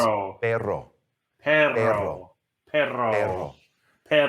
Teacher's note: double R. The double R is going to be what we call a trill, which is you're going to trill it like that with your tongue.